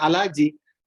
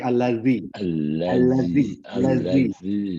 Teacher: Makhrajul huruf za itu jangan berada di tengah lidah. Dia beradanya di ujung lidah. Za berada di ujung lidah, sedikit keluar dari gigi depan.